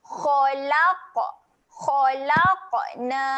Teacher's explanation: Huruf qaf dekat sini keadaan qaf bila mati sifatnya ada lantun. Jadi kita kena lantunkan bunyi huruf qaf ketika mati.